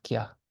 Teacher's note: It's basically when subjoined letter becomes a high pitched ya. It's added in between the consonant and the vowel.